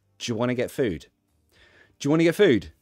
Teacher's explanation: do you can become je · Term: j sound, J sound